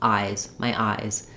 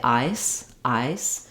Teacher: making sure that you have that voiced Z sound at the end